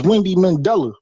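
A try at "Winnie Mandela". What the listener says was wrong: Winnie. There's no D.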